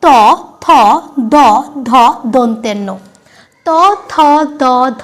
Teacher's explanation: যখনই আমরা উচ্চারণ করছি আমাদের জীবটা আমাদের দাঁতে স্পর্শ করছে দেখো আমাদের জীবটা গিয়ে আমাদের দাঁতে স্পর্শ করছে তবেই কিন্তু আমরা এই পুরো লাইনটাকে উচ্চারণ করতে পারছি তাই এটাকে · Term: দন্তবর্ণ